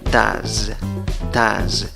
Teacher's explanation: Tiene 3 sonidos. Se escribe con O y E, pero la pronunciación es con solo una vocal. Schwa, la que no es ni A, ni E, ni O. · Acaba en S en la escritura, pero en la pronunciación acaba en Z.